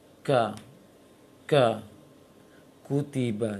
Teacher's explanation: kaf ini punya sifat syiddah lebih kuat daripada hamas, maka dahulukan syiddahnya baru hamasnya. Dan itu puncakkan kaf jangan terlalu besar anginnya. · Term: syiddah dan hamas